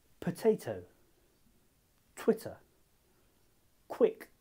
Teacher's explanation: when you say these sounds a puff of air should come out of your mouth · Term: aspirated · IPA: p t k